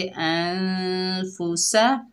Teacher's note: फ़ा के ऊपर पेश है, सीन के ऊपर ज़बर है, बगैर खींचे पढ़ेंगे अनफुसा